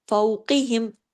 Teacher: قاف جو ہے ہیوی لیٹر ہے، اس کو ہم نے موٹا پڑھنا ہے